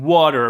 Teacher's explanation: in english there is this half vowel this woo sound like in water